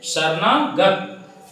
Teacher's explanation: शरणागत यानी अ और आ मिला तो आ बना दिया, यानी कि दो अक्षर, दो ध्वनि मिल करके एक परिवर्तन कर दिए, इसी को संधि कहा जाता है।